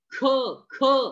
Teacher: ह मित्रांनो जो आहे शेवटी ह चा उच्चार होऊन आला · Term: महाप्राण व्यंजन